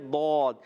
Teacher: دود حروف مستعلیہ میں سے دود کا مخرج ہے زبان کی کروٹ، زبان کا بغلی کنارہ، اوپر کی داڑھوں کی جڑوں سے ادا ہوتا ہے